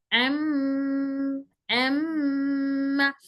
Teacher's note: तो जो भी लेटर हम पढ़ेंगे वो मुंह से अदा होगा, वो लेटर मुंह से अदा होकर उसकी आवाज नाक में जाएगी, नाक में जाने के बाद उन्हें घूमने लगेगी, जैसे ही घूमेगी फिर वापस नाक से बाहर निकल जाएगी। ये नाक से निकलने वाले हरूफ है जिनमें हवा नाक के रास्ते से निकलती है। · गुन्ना की आवाज नाक से वापस बाहर निकलती है।